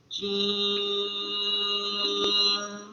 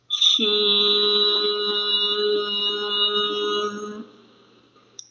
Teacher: جیم، شین اور یا زبان کے درمیان اور تالو کے درمیان سے ادا ہوتے ہیں۔ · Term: حروف شجریہ